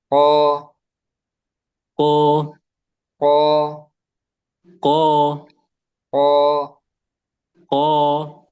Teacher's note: Jadi enggak ada keluar udara ya. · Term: huruf qof, huruf kof